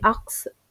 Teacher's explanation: the positions of the consonant s and k are reversed